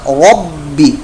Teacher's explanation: ربی را پر موٹا، با مشدد قلقلہ